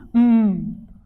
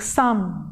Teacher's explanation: there is a closure formed at the lips so there is an oral closure that means the air coming from the lungs cannot pass out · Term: nasals